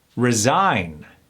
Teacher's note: those sneaky s with the Z Sounds are put in the middle of bigger more complex words